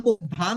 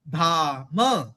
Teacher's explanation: तो म में भी हमने अ की मात्रा का उच्चारण करना है